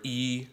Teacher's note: the first tone is flat and it's even